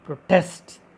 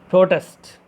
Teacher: Here we focused, we stressed on second syllable, that is test. Protest. Like while using as a noun protest, we focused on, we stressed on pro.